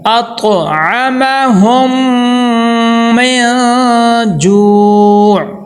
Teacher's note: یہ دیکھیں کہ میم ساکن کے بعد میم آ گیا، اب ہم نے میم کو میم میں داخل کر کے ادغام کرنا ہے، غنہ کرنا ہے. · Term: ادغام شفی